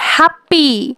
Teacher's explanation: যেমন আমি আগে বলেছিলাম হ্যাপি, হ্যাপিতে 2টা সিলেবাল, হ্যাপ এবং পি। তো প্রথম সিলেবাল হ্যাপে জোর পড়ে, যেমন হ্যাপি, এবং দ্বিতীয় সিলেবাল পি, এটা হচ্ছে আনস্ট্রেসড, কারণ এখানে জোর পড়ে না বা কম পড়ে।